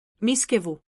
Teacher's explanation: There is no I after the V. The word has 3 syllables, not 4, and the stress is on the first one. The correct pronunciation is mischievous.